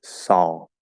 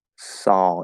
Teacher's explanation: if we keep the half L the dark l that affects the ah sound because it's l colored